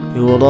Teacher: Yura'u, mad wajib mutasil ya, mad tabi'i menghadapi hamzah dalam satu kalimat dibaca panjang, ini 6 harokat